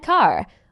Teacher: in the British accent, the R at the end of words is often not pronounced, so car might sound more like car.